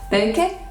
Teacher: Okay, there is no sound b in Maori, so it is replaced by its voiceless version p. The sounds n and k become one, and the vowel is added at the end because every syllable has to be open